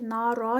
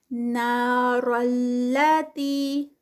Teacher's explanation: را جو ہے وہ آگے لام کے ساتھ مرج ہو رہی ہے تو پھر نارا نہیں ہوگا بلکہ نار اللاتی، تی پہ 2 کاؤنٹس کیونکہ آگے یا مد آ گئی ہے.